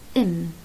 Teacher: إم إذا حطيت إيدك على الفوكال كورتس على الأحبال الصوتية بتحس بيهتز، في اهتزاز بسيط صح، مش زي الإز بس بسيط، بس في اهتزاز.